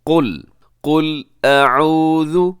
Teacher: سب سے پہلے قل میں قاف موٹا رکھیے گا اور لام باریک ہے۔ اکثر کیا ہوتا ہے کہ لام بھی ساتھ موٹا ہو جاتا ہے، تو آپ نے صرف قاف کو موٹا رکھنا ہے۔